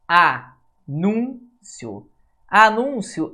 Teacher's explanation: a sílaba tônica sílaba mais forte é penúltima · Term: paroxítona